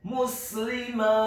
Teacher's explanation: huruf ta-nya dibaca tipis, kemudian ada hamesnya dan diwaqafkan